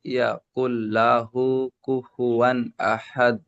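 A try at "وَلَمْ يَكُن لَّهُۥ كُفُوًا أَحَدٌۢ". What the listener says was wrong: কুল্লাহু, হা উল্টা পেশ হু, একটা টান দিয়ে পড়তে হবে, উল্টা পেশ ও মাদের সমতুল্য। ওয়ালাম ইয়াকুল্লাহু কুফুয়ান আহাদ।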